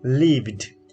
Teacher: If it comes after voice sound, we pronounce it as da, like lived.